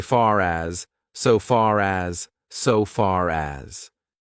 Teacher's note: We don't pronounce the R, but actually, we do if the next word starts with a vowel. We pronounce it because we need to link those two words together, and it's very hard to say far as.